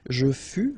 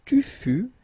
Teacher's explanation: keep in mind that final S is not pronounced. Tu fus, exactly the same thing, final S not pronounced.